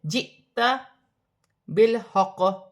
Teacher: حمزہ پر جزم کی حرکت ہے، جھٹکے کے ساتھ ادا کیا جائے گا، جیسے جئتا بالحق۔